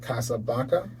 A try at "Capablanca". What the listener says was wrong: Capablanca. Change the S into a P. Capa.